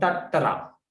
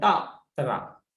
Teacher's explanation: two consonants come together without any vowel, so we pronounce tattara, other than ta-tara, because two consonants, if they come two consonants together, the formal consonant connected to the formal syllable.